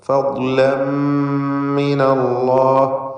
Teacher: തൻവീനിന് ശേഷമുള്ള മീമിൽ പൂർണ്ണമായും ലയിപ്പിച്ച് മണിക്കണം, ഇദ്ഗാം ബിഗുന്ന കാമിൽ. ഫദ്ലം മിനല്ലാഹി, അല്ലാഹ് എന്ന ഇസ്മുൽ ജലാലയിലെ ലാമിനെ തടിപ്പിക്കണം, തഫ്ഖീം ചെയ്ത് ഉച്ചരിക്കണം.